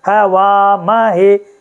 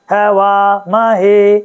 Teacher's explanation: आप देखो है छोटा है वा म छोटा और हे देखो एक छोटा एक बड़ा एक छोटा एक बड़ा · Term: बड़ी मात्रा